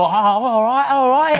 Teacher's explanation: It's just like one long vowel, no consonants going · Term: Cockney accent